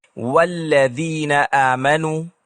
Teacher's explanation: جیسے جب ہم کہتے ہیں والذین آمنوا، یہاں حمزۃ الوصل گر جاتا ہے، کیونکہ میں واو کا تلفظ کرنے کے بعد اسے براہ راست اگلے لفظ سے جوڑتا ہوں